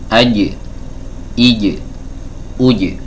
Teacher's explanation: jawabnya dari tengah lidah, ya, bertemu dengan tengah langit-langit atau langit-langit bagian atas. Ya, langit-langit bagian atas di pertengahannya di sini ya teman-teman ya. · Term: huruf Jim, huruf jim